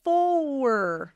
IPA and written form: fɔər (four)